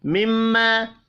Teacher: میم مشدد پر غنہ کریں گے، الف مدہ کو ایک الف کے برابر کھینچ کر پڑھنا ہے۔